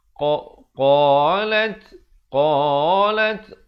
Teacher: Qalat, qalat, qa 2 harakat. Lat diberikan hamasnya, bunyi angin tu.